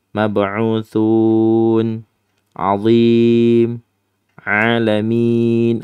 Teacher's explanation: adik-adik bisa memanjangkan sampai empat harakat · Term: Mad Arid lukun